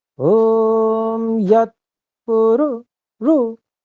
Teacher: पु यत पु ये बिल्कुल सामान्य है, बिल्कुल मध्यम स्वर है, ठीक है, जो उदात्त है। और र में जो उ की मात्रा है उसको कंठ के ऊंचे वाले भाग से बोलना है